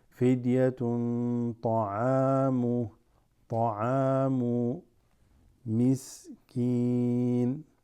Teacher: This tanween before the ta also is ikhfa.